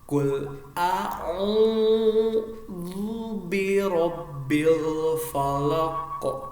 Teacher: Ada mantul namanya qalqalah di akhir kalimat, qalqalah kubro